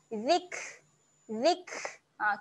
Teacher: Huruf kaf kat sini kaf dia ada sifat, okey, ada mati, ada tanda mati. Jadi sifat kaf ketika mati kita kena keluarkan sedikit angin. Okey, keluarkan angin, bunyi dia adalah zik.